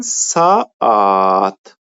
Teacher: Yəni eyni saitin qoşalığıdır. Bu sözləri biz tələffüz eləyəndə saitlərdən biri düşür, digəri uzanır.